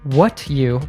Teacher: Earlier, we saw how D plus Y usually morphs into a J sound. Similarly, when we combine T plus Y, it morphs into a ch sound.